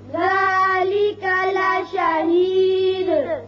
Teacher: وقف کی صورت میں تو دال ساکن اور صفت قلقلہ ادا ہوگی